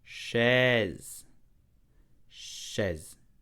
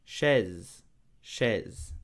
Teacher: So the sh sound, okay? Then an open e, okay? Then a z sound.